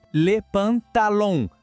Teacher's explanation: O segredinho aqui é o som nasal no final. Aquele som que parece que sai um pouco pelo nariz